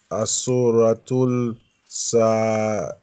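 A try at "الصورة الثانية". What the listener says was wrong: There's a shadda here, so join ta with sa. This is sa.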